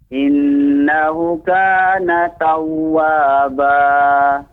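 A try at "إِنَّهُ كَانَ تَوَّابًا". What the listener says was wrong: Innahu itu huruf yang bermat Pak. Lebih dipanjangkan. Innahu. Jadi catatannya Pak, ya, lebih harus lagi fokus memperhatikan panjang pendeknya, ya.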